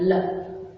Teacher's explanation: जब हम लय का उच्चारण करते हैं तो जो हवा है वो हमारे पिछले हिस्से से निकलती है, यहां से निकलती है ल, है ना, तो इसलिए इसको बोलते हैं पार्श्विक, क्योंकि पिछले हिस्से से जब हम इसका उच्चारण करते हैं तो पिछले हिस्से से इसकी हवा निकलती है।